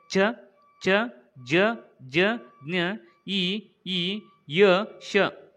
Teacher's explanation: ತಾಲೂವಿನ ಅಂತಂದ್ರೆ ದವಡೆಯ ಸಹಾಯದಿಂದ ಹುಟ್ಟುತ್ತವೆ · ದವಡೆಯ ಸಹಾಯದಿಂದ ಹುಟ್ಟುವಂಥ ಅಕ್ಷರಗಳನ್ನು ಏನೆಂದು ಕರೆಯುತ್ತಾರೆ ಅಂದರೆ ತಾವಲ್ಯ ಅಕ್ಷರಗಳೆಂದು